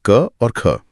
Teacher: अघोष ध्वनियां वो हैं जिन्हें बोलते समय गले में कोई खास कंपन नहीं होता। इसके लिए हमें हर वर्ग के पहले और दूसरे अक्षर को लेना होता है।